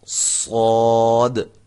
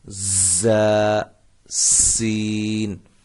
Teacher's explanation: اب فرق یہ ہے کہ صاد کی جو سیٹی ہے یہ موٹی ہوگی، زا اور سین ان کی سیٹیاں جو ہیں وہ سیٹی کی جو آواز ہے وہ باریک ہوگی